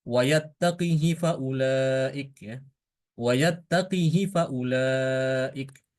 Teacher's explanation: lafadz wa yattaqhi itu dibaca dengan mengkasrohkan huruf qaf. Hanya hakinanya dibaca pendek.